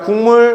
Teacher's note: 뭐로 바뀌었어? 파열음이 비음으로 바뀐 비음화 현상이죠